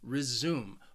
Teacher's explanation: But I think learners quite often confuse it with the verb resume, which has two syllables and the stress is on the second syllable, resume. But we're talking about the noun, your resume, my resume.